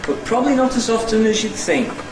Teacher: a low fall nucleus on think, and a stepping head running down towards it. Also notice the elision in probably, and this time in often we got the full value for the alveolar in the middle. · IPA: bət ˈprɒbli nɒt əz ˈɒftən əʒ jud ˎθɪŋk